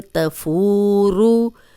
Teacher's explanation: رو پہ پیش ہے، رو موٹی رکھیں گے